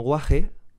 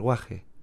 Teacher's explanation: aspirada o h punteada este aparece en palabras como guaje y se pronuncia de forma similar a como se podría decir la h en inglés como hostel quizás con un matiz más agresivo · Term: hache aspirada